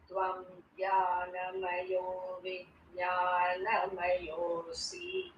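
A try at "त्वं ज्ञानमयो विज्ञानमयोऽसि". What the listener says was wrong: There you have to be a little careful in the end. That C is hrasvam, short. So you cannot allow that to get dragged to a dirgham.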